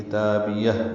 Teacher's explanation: کتابیہ کاف کو جلدی ادا کریں گے، باریک پڑھیں گے، تا کو 2 حرکات لمبا کریں گے، با کو بھی جلدی پڑھیں گے، یا کو ہا سے ملا دیں گے۔ کتابیہ یہ ہاں ساکن ہے، اس پہ ہمس ہوگا وقفاً وصلاً